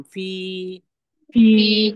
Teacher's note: फ में या मद्दा हो रहा है। फ को खींचेंगे हम।